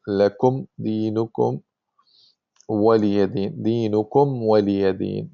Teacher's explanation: the articulation point of the meme and the waw and the fa are very close to each other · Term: idhar of the meme